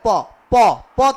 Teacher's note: प का उच्चारण स्थान क्या हो जाएगा ओट हो जाएगा